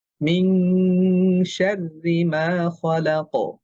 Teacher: কফ একটা মোটা হরফ, কলকলাটাও মোটা হবে